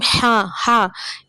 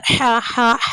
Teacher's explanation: அந்த ஹா வந்து தொண்டையுடைய அடிப்பாகத்தில் வந்து அந்த ஹா சவுண்டு நம்மளுக்கு வெளியாகணும்.